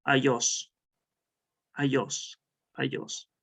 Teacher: Por ejemplo, adiós está reemplazando esta oclusiva bilabial, no, que está reemplazando la oclusiva alveolar, que es la D, lo está reemplazando por la, en este caso por la Y, por la utilizada, ¿no?